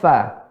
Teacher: ujung gigi seri atas bertemu dengan perut bibir bawah, ya, atau bibir bagian tengahnya, bibir bawah bagian tengah